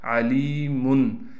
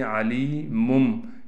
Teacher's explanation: اصل پڑھنا ایسے تھا علیمن، لیکن چونکہ اقلاب کے قاعدے سے یعنی نون تنوین اور ساکن کے بعد با آ جائے پھر ہم اس کو میم سے بدل لیں گے۔